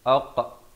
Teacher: ada lantunan di sini khakhalah sughra